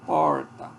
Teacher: a língua vai bater nos alvéolos E aí antes de bater ela dá uma dobradinha para trás e sai o teto esse essa retroflex aqui ó para fazer